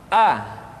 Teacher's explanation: ada pada tenggorokan yang terjauh